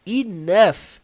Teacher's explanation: você não vai ver som de E, você vai ver o som do I. E o som do GH é um som de F.